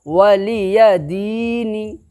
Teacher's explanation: حرکت کو نہیں کھینچنا ہے بلکہ یا مدہ کو کھینچ کر کے پڑھنا ہے